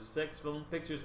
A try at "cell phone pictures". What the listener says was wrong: Cell phone pictures. You said sex phone pictures. Sex phone?